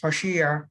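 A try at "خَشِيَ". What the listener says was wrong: ইয়াকে আরেকটু স্পষ্ট করে, ইয়া, খসিয়া, খসিয়া।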